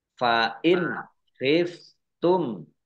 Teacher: Fa'in khiftum nun sukun bertemu dengan huruf kha, bacaan idhar dibaca jelas